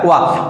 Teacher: दंत और ओष्ठ दोनों से मिलकर बनता है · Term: दंतोष्ठ